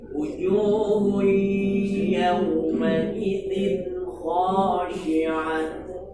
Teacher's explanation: itu idgham bil gunnah itu dengan suara al khayshum dengung